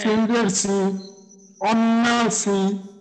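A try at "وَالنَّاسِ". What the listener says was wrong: আচ্ছা আচ্ছা, এখানে আপনার গুণনাও হইলো টানও হইলো, কিন্তু পরিমাণটা আরেকটু বাড়াইলে আরো সুন্দর হবে। যেমন ওয়ান্নাসি, ওয়ান্নাসি।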